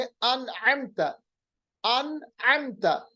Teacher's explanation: अन में आपने देखा नून को हमने जाहिर किया और जल्दी से अदा किया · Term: इजहार